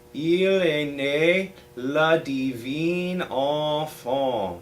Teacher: on that enfant, you're not letting your tongue come up to make that that N sound. It's kind of happening nasally. The tongue in the back is coming up just a bit, but it's not ever touching the roof of the mouth. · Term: nasal effect